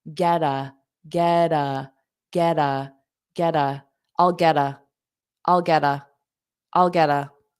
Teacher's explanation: the get is pronounced together, but we change that T to a soft D